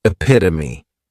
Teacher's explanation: this noun has 4 syllables, and the stress is on that second syllable, epitome.